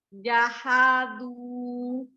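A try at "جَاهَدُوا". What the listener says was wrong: Jaha-nya agak lebih tekan.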